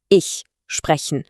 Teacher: Der weiche Ich-Laut wird vorne im Mund gebildet, fast wie ein leises Zischen.